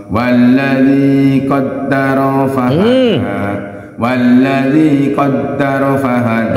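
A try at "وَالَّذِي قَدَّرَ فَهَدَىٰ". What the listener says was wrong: Ro'nya jangan lama ditambung.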